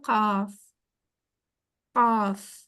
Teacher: काफ सबसे आखरी हिस्से से यानी कि जो हमारे हलक के करीब वाला हिस्सा है वहां से ये लफ्ज निकलता